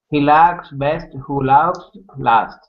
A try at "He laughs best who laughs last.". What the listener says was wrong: You know, work on the intonation. Good pronunciation of the "ah" sound, by the way.